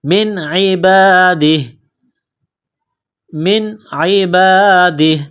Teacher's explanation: جب وقف کریں گے تو ہا کو سائلنٹ کریں گے · یہاں نون ساکن کے بعد عین ہے، حروف حلقی ہے، تو نون ساکن پر غنہ نہیں کریں گے